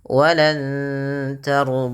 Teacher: Samarkan bunyi suara nun kepada huruf ta yang di mana nunnya berwarna hijau yang artinya dibaca dengan bacaan ikhfa.